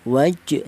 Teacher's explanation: Qalqalah itu artinya ada suara pantulan. Jadi cara bacanya dipantulkan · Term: qalqalah sughro